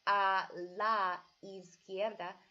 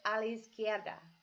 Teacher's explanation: you almost put those two words together when you're saying it and almost blend the words